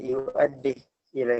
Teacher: Yu'addih dia disukunkan untuk bacanya Syu'bah